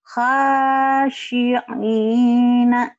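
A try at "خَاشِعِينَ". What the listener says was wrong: Kho, bukan ha ya Bu ya. Ada titiknya ho. Kalau enggak titik ya. Kho.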